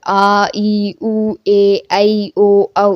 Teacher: நெடில் எழுத்துக்கு 2 மாத்திரை. இந்த 7 எழுத்துக்கும் வந்து 7 எழுத்துக்கும் 2 மாத்திரை அளவு. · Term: நெடில் எழுத்துக்கள்